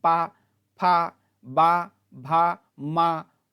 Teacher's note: इनका उच्चारण स्थान क्या है होठ जैसे पा इनके उच्चारण में हमारे होठ को है दोनों मिलते हैं पा फ बा भा म उ उ उ में हमारा होट